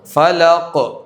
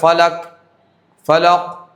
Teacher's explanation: تو قلقلہ کی لوٹتی ہوئی آواز خوب ظاہر کرنی چاہیے